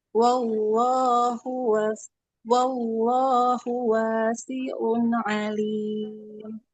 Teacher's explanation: Yang panjang lamnya bukan h-nya.